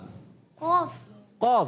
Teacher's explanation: जबान की जड़ और तालु का नरम हिस्सा कौफ का मखरज है